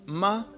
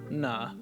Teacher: on the next row we have our nasal sounds these are sounds in which you block the air flowing out your mouth and instead direct it through your nose